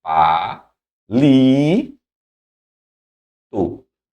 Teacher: Se eu tenho a penúltima, né? Paroxítona, sílaba tônica na penúltima.